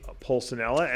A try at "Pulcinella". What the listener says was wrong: You leave out. All you're doing is you're leaving out the L. That's all you're doing. You say Pulcinella, and it's Pulcinella. That's all. That's it.